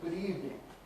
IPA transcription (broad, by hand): ˈgʊd ˈiːvnɪŋ